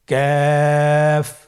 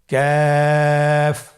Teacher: কাফের মাখরাজ হলো জিহ্বার গোড়া থেকে একটু আগে বাড়িয়ে তার বরাবর উপরে তালের সঙ্গে লাগিয়ে উচ্চারিত হয়। · তৃতীয় নম্বর হরফটির নাম ক্যাফ। কাফ উচ্চারণের ক্ষেত্রে অবশ্যই পাতলা করে উচ্চারণ করতে হবে এবং 3 আলিফ টেনে পড়তে হবে